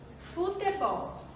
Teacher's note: A sílaba mais forte da palavra futebol é o bol. É a última sílaba. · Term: sílaba tônica